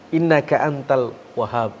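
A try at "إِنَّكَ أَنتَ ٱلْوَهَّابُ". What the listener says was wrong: Nah, itu. Tasdidnya kurang menonjol. Ini berubah, beda. Kalau Wahhab Wahhab itu maha pemberi. Kalau Wahhab saja, pemberi saja. Ini beda.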